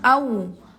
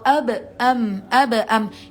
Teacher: Mim sama ba itu pengucapannya sama-sama dengan bibirnya mingkem.